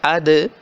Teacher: زبان کی نوک دانتوں کی جڑ سے لگ رہی ہے، دانتوں کے پیچھے لگ رہی ہے اد، حمزہ زبر دال اد، حمزہ زبر دال اد۔